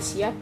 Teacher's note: karena P pada siap diucapkan dengan kedua bibir tertutup